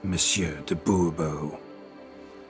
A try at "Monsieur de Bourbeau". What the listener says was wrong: The emphasis falls on the last syllable.